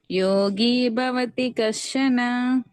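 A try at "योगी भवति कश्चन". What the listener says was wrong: right కొంచెం రావాలి but okay good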